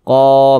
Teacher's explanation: tanda baca baris satu ke atas ini tanda baca fathah maka huruf yang memiliki tanda baca fathah ini dibaca panjang Karena dia berposisi tepat sebelum huruf alif ini ada huruf ini huruf alif sebelumnya ini ada tanda baca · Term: Mad thobii